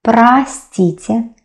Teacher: we pronounce а, though you can see о